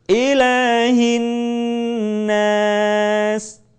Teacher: Jangan lupa ilah tidak boleh kepanjangan. Cukup diayun.